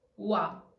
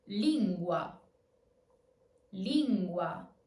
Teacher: The weak u is not a full u, but more like a w. Wa, as in lingua.